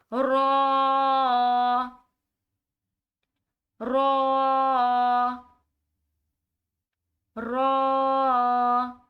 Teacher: را کو پڑھنے کے لیے اپنے منہ کو گول شکل میں کر کے پڑھا جائے گا ، را موٹے الفاظ میں آتا ہے، موٹا کر کے پڑھا